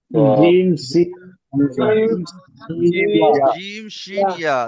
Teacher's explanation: দেখেন এই 3টে মাখরাজ উচ্চারিত হবে কোথাতে দেখেন, জিভের জিভের মাঝখান, আপনার জিভের মাঝখান এবং তার বরাবর ওপরের তালুর সাথে চেপে উচ্চারিত হবে।